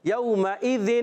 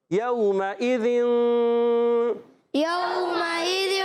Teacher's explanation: ناک میں آواز لے جائیں گے مگر نون کو چھپا لیں گے. ناک میں تو آواز جائے گی، لے کے جائیں گے. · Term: اخفا